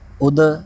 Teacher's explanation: اگلا حرف دال حرف کلکلا میں سے ہے، اس میں آواز لوٹی ہوئی نکلے گی